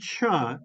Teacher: it's a special combination of a plosive plus that immediately moves into a fricative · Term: affricate